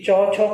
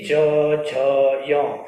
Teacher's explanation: च छ को जब बोलते हैं तो किसी भी प्रकार की गूंज पैदा नहीं होती, लेकिन जैसे ही ज झ य बोलते हैं तो गूंज पैदा होती है। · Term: सघोष